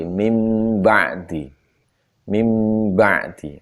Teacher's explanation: Adapun nanti non mati atau tanwin ketemu ba dibaca iklab. Bacanya mingkem pasti.